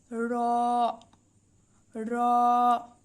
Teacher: নুন 10 নম্বর মাখরাজ র জিহবার আগার পিঠ তার বরাবর উপরের তালুর সঙ্গে লাগিয়ে উচ্চারিত হয় এটি মোটা করে পড়তে হয়